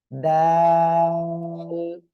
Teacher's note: জিহ্বার আগা দুই দাঁতের গোড়ার সঙ্গে লাগিয়ে উচ্চারণ করতে হবে, আর উচ্চারণের সময় তিন আলিফ টেনে পড়তে হবে।